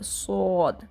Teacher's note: اور سین اور صاد میں یہی فرق ہے کہ سین جو ہے اس میں بھی سیٹی کی آواز ہے لیکن وہ باریک پڑھا جاتا ہے، اسمائل کے اسٹائل میں ہونٹوں کو اسٹریچ کیا جاتا ہے سین۔ اور صاد کو پر پڑھا جاتا ہے، ہونٹوں کو گول کر لیتے ہیں اور زبان کو پیچھے سے اٹھائیں گے تو وہ ایسے منہ بھرا ہوا ہو جائے گا، پر ہو جائے گا، موٹا ہو جائے گا صاد، ٹھیک ہے؟